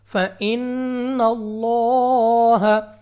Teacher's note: لام کو 2 سیکنڈ تک لمبا بھی کرنا ہے اس کھڑی زبر کی وجہ سے · تو اس لام آف اللہ کو پر پڑھا جائے گا، یعنی موٹا، اپنی آواز کو اٹھا کر، اپنے منہ اور آواز کو کھول کر